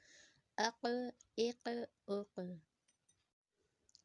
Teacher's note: موٹا بھی ریڈ کریں گے اور آواز کو ہلا کے پڑھیں گے کیونکہ حروف قلقلہ میں سے قاف، اق، اق، اق۔